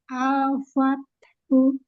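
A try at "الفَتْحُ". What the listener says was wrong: Fathu. Lamnya selesaikan. Al-fathu.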